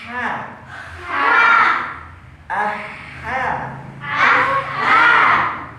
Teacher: ha ha keluar dari tengah tenggorokan bersih